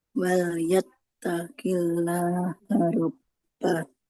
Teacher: Lafaz Allah itu kalau huruf sebelumnya berharokat kasroh maka lamnya tidak usah kita baca tebal ya. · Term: lamnya tipis biasa